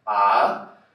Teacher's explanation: A segunda entonação já é um A de surpresa. Eu falo como se fosse fazer uma pergunta.